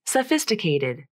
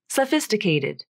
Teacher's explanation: notice how the second T becomes the flap in this word